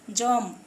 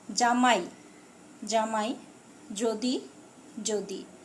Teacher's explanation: এই দুটো জয়ের কোনো উচ্চারণ পার্থক্য নেই। যেমন দেখো, জম, এখানে আমি বর্গীয় জয় দিয়েছি, জম।